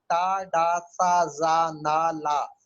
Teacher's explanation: आप बोलेंगे तो आपको लगेगा कि जबान मसूड़ों से टकरा रही है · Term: लिंगुआ अल्वियोलर साउंड